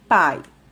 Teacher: como um ditongo oral porque o a sair pela boca e ele também é classificado como um ditongo decrescente porque primeiro veio a vogal em seguida veio a semivogal